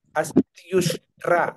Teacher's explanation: ఈ రెండు పదాలు కలవడం వల్ల ఏమిటంటే యకారం మధ్యలో వచ్చి ఆ రెండింటిని కలిపింది